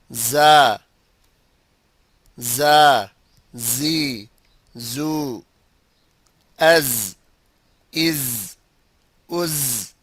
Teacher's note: A small gap is left between the tongue and the incisors. When pronouncing this letter, the air is exhaled softly. The exhalation should be continued, otherwise the pronunciation will not be correct.